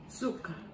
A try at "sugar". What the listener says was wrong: No, it's a sh sound.